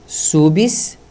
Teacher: Na substância, é a sílaba anterior ao si, que é a forte. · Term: sílaba tônica